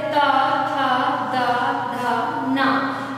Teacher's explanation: ये दंती वर्ण कहे गए हैं क्योंकि इनके उच्चारण करते समय हमारी जीवा दांत को स्पर्श करती है